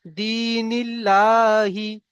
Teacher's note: আল্লাহ শব্দের ডান দিকে জের এসছে, তাই লামকে বারিক করে পড়বো · দাল ইয়াজের দি, ইয়া সাকিনের ডান দিকে জের এসছে, তাকে ইয়া মাদ্দা বলা হয়, ইয়া মাদ্দাকে একালিফ পরিমাণ কাম দিয়ে পড়তে হয়। নূরের নিচে জের এসছে, যেটি হলো হারাকাত, হারাকাতের পড়াকে তাড়াতাড়ি পড়তে হয়, কাম দেওয়া নিষেধ।